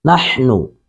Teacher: حا کو حلق سے ادا کریں گے